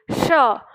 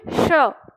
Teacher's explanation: लेकिन दंत से नहीं तालु से करना है। आपकी जीभ ना तालु के नीचे होनी चाहिए। श, तो आप बोलेंगे श, तो जैसे ही आप श बोलेंगे तो ये जो तालु का जो सही उच्चारण है वो अपने आप उच्चारित हो जाएगा।